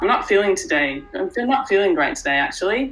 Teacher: as an Australian, whenever we speak, at the end of our sentence, our tone goes up.